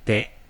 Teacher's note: So what it sounds like to me is that he Te. has a retroflexive T, meaning that the tip of the tongue is pointing way back into the mouth. Te.